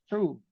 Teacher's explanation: Dia punya desiran angin tu kita dapat rasa di bahagian atas. Bahagian atas langit-langit kita tekak yang lembut tu, yang dekat dengan anak tekak tu kan.